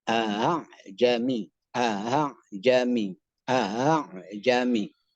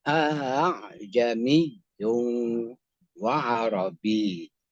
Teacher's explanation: Ingat, huruf hamzah baris atas. Kalau di tashil, bunyinya antara hamzah dan alif.